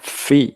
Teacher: ujung gigi seri menyentuh ee perut dari bibir kita yang bawah